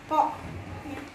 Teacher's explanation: Oke, kita kasih kode untuk qaf yaitu B, karena ketika kita mengucapkan huruf qaf itu berada di pangkal lidah, adanya di belakang lidah, ko.